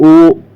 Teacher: तो ओ जब हम बोलेंगे दोस्तों, क्या ओ, तो ओ में हमारे ओंठ आगे बढ़ेंगे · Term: कंठोष्ठ